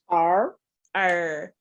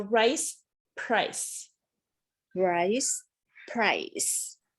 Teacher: american r is pulled back and it's held tensely